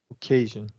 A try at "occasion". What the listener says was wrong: Well, you're still rounding your lips, so you're saying occasion, and you want to do just a relaxed schwa sound. Occasion.